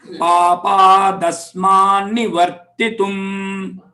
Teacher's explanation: पापादस्मान्निवर्तितुम् You can note here, papat, the ta sound becomes da. Asmat, this ta sound becomes na.